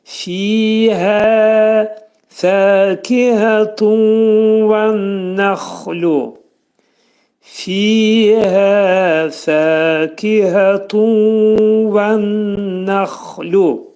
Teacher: İncə samitdir. Fənin məxrəci yuxarı üst dişlə alt dodağın arasında olacaq.